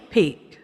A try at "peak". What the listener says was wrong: Pronounce the K because I wasn't sure whether you peak.